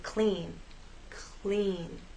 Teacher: when L follows P or C it actually begins voiceless your sound starts as you drop your tongue down to make